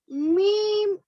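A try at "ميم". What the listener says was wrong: लंबा कीजिए और।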